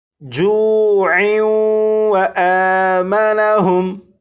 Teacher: اگر اس لفظ پر وقف نہ کرنا ہو بلکہ اس لفظ کو آگے اس لفظ کے ساتھ ملا کر پڑھنا ہو تو پھر یہاں پر تنوین اور تنوین کے بعد واو حروف یرملون میں سے ہونے کی وجہ سے یہاں پر ادغام ہوگا، اور پھر اسے اس طرح پڑھیں گے جوع و آمنہم.